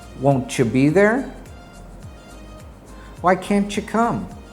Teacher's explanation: when a final T is followed by a Y, it is pronounced ch